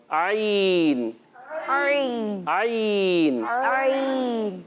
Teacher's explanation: جی ہاں, ہلکے سے عین. اور حلق کا درمیان والا حصہ, جو حلق کا وہ حصہ ہوتا ہے جہاں پر ہمارا تھوڑا سا ابھرا ہوا حصہ ہوتا ہے حلق میں, اس والے حصے کے آپ برابر سے دبائیں گے